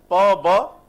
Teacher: जैसे प ब दोनों में लिप्स ही है ना, दोनों लिप्स यूज हो रहे हैं ना